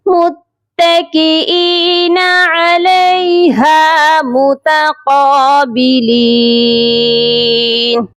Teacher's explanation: قاف کو ایک الف کے برابر لمبا بھی کریں گے اور قاف کو موٹا کر کے پڑھا جائے گا